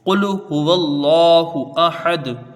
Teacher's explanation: دال ساکن ہوگی، قلقلہ ہوگا، مد کوئی نہیں بنے گا یہاں پر۔